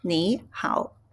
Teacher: when we have a two third tones, and you change the pronunciation the first one to second tone. So, it's ni hao.